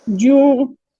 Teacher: जू वस्त लिसान से है, वाव ये जौफ दहन से है